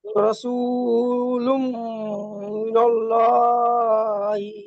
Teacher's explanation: তানবিনের পরে ইউ মিনের 4টি অক্ষরের মধ্যে মিম এসেছে, তাই তানবিনকে একালিফ গুন্না করে পড়তে হবে, একে ইদগামে নাকিস বলে।